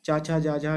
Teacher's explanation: तो ये चा वर्ण यानी कि तालु से या तालव्य से बोला जाएगा